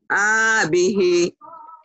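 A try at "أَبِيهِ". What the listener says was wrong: A-nya pendek, Bu. Nah, abihi.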